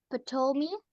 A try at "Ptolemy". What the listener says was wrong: Ptolemy is just Ptolemy. You don't pronounce the P.